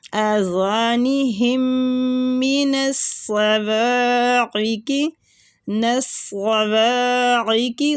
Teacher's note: عین کی آواز حلق میں لے کے جانی ہے، حلق سے نکالنی ہے ، یہ الف مطلب حمزہ کی طرف نہ جائے، عین کی